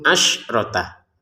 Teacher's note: Asyrota jangan dipantulkan sinnya.